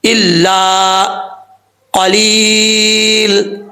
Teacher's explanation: قاف حروف مستعلیہ میں سے پر پڑھا جائے گا، آگے یا مدہ ہے، ایک الف کی مقدار لمبا کریں گے